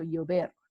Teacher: the v is not pronounced any different to the b it sounds like a b so uber again notice that the v is not pronounced v